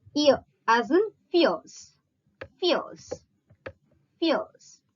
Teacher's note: the front of the tongue is first raised in the direction of the hard palate to a height between close and half close, and then the center of the tongue quickly goes up towards that part of the roof of the mouth which lies between the hard palate and the soft palate to a height between close and half close. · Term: ear sound